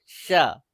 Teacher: तुमको तालो में जीव को सटा के बोलना है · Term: तालव्य श